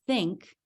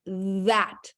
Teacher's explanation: we make the quiet th sound like in the word think but we can also teach the noisy TH or voiced th sound which is like in the word that